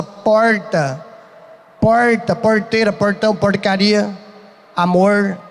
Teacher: Se alguém aqui conhece quem é lá de São Paulo, interior paulista principalmente, tem uma característica que é a retroflexão do R. O R retroflexo, sabe o que é isso? Que é aquele R que parece que se dobra na pronúncia.